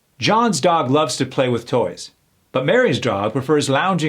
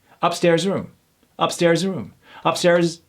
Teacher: when we go in real time those z's are barely heard